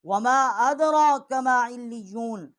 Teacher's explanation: ہم نے میم الف ما 3 الف جتنا آواز بلند کیا ہے ، ادرا اور دال کے اوپر ہم نے ادغام کیا ہے،